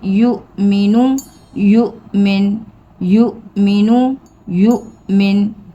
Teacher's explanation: یہ حمزہ ہے اور ساکن ہے تو ہم اس کو جھٹکے سے پڑھیں گے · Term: حمزہ ساکن